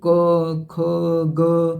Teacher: ये आपके कंठ से आवाज आती है